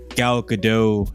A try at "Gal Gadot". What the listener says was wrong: And I think it's Gal Gadot. Like you're not supposed to do the emphasis on the T. It's like Gal Gadot. You got to do it quick and soft. Yeah, it's like you almost don't hear it.